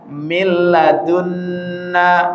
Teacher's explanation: Nah, ini kebetulan ketemu nun tasdid ya. Ininya yang kita tahan nunnya. Lamnya jangan ditahan.